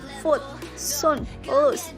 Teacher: But BBC U is much less back and less close, while the lips are only moderately rounded.